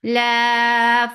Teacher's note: La 4 counts long. Mad munfasil jaiz.